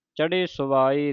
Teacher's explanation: ਚੜ੍ਹੇ ਭਾਰਾ ਹਾ ਲੱਗਾ ਥੱਲੇ ਇਹ ਧਿਆਨ ਰੱਖਣਾ ਭਾਰਾ ਉਚਾਰਨ ਕਰਨਾ